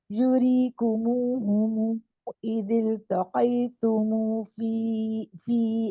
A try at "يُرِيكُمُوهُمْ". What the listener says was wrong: آپ کی واو مدیہ ٹھیک نہیں جا رہی. آپ اس کو بہت تھوڑا کم کر رہی ہیں. دیکھیں منہ ایسے ہموں تموں آپ کا تھوڑا کم.